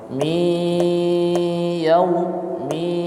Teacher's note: pada idgham bighunah maka didengungkan dengan sebenar-benarnya dengung dengan tiga harakat